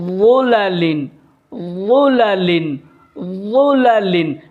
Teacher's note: زبان کا کنارہ اوپر کے سامنے والے دونوں دانتوں سے لگے گا اور منہ بھر کے موٹی آواز نکلے گی